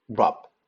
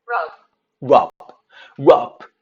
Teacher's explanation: 받침소리 터지지 않아요. 원래 개방음은 터져야 되는데 터지지 않는다. 그래서 rub 하고 받침소리도 들어가고 맙니다. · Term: 비개방음